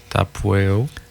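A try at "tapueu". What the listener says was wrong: Tapueo. Le U ne se prononce pas Weo, là. Il se prononce Tapueo. Comme si ce serait OU, mais en cours, là. Tapueo.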